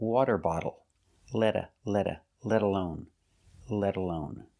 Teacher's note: When you say let alone, the T is between vowels, so it sounds like a fast D